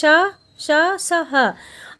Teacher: ऊष्म व्यंजन अभी मैंने आपको बताया था कि इसका उच्चारण एक प्रकार की रगड़ या घर्षण से उत्पन्न होता है जो हमारी सांसों में ऊष्म वायु से होता है।